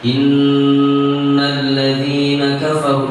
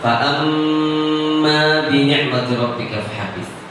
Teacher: Dan kita pun ketika melihat prakteknya para pakar-pakar qari yang ada di Timur Tengah, mereka ketika mempraktekkan memang nun tasydid dan mim tasydid itu lebih lama dibandingkan pada saat dia nun ketemu fa, nun ketemu qaf, nun ketemu ba pada saat iqlab dan ikhfa.